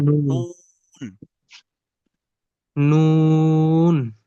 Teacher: নুন, তিন আলিফ পরিমাণ টান হবে